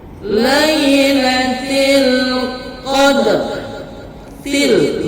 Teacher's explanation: lamnya jelas terbaca di mulut, itu disebut alif lam qamariyah